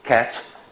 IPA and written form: kæt (cat)